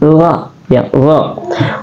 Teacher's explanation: ra adalah tarful lisan keluar di ujung lidah